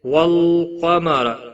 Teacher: کسی بھی حرکت والے حرف کو کھینچنا نہیں، را پیش کی وجہ سے پر پڑھا جائے گا، قاف حروف مستعلیہ میں سے ہے، پر پڑھا جائے گا